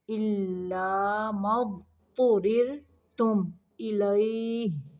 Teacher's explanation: را کو باریک پڑھیں گے ساکن کرتے ہوئے